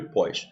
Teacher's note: quando você fala pós com som aberto ó ele é tônico tem que vir com if quando ele tiver o som fechado